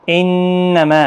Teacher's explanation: ما یہاں پر مد منفصل ہے، 3 الف کی مقدار کے برابر کھینچیں · انما نون مشدد پر غنہ ہوگا